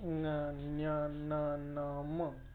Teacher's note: का म्हटलं जातं की त्यांचा जो उच्चारण आहे तो नाकाद्वारे, जसा उच्चारण आपण म्हणत असताना थोडासा नाकाचा भागाचा वापर आपण मधल्यामध्ये करत असतो, म्हणजे जो वायू निघतो तो मुखातून आणि नासिकेतून म्हणजे नाकाद्वारे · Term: अनुनासिक